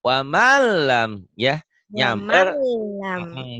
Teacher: disamberin tapi jangan ditahan karena idgham bila gunnah